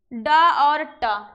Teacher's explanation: ड और ट ये ट वर्ग के हैं, इनका उच्चारण स्थान होता है मूर्धा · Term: मूर्धन्य व्यंजन